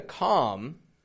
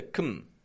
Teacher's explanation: There's a schwa in there. Instead of a regular O.